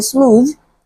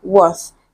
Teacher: two sounds are similar they are produced in a similar way the only difference is one is with vibration and the other is without vibration